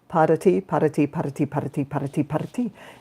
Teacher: the tongue point trill is right up behind the top front teeth and it's driven by the release of air not a push of anything not a not a forceful push